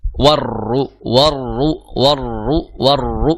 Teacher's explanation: ro itu karakternya juga bukan karakter yang kuat jadi r-nya itu juga Getaran yang sedang